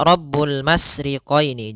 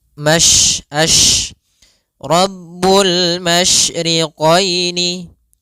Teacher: Tafasyi adalah salah satu sifat yang terkandung di dalam huruf shin, yaitu menyebarnya suara. Sehingga jangan dibaca Rabbul masriqaini, jangan dengan huruf sin, tapi dia huruf shin.